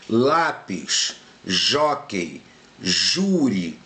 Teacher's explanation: A sílaba tônica é a penúltima sílaba, tá? Não é a última, é a penúltima. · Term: paroxítonas